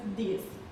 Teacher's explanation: pronunciation of TH is like T or D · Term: Irish accent